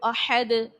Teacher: ساکن کرنے کی صورت میں دال جو ہے حرف قلقلہ ہونے کے سبب اس کو خوب ظاہر کرو گے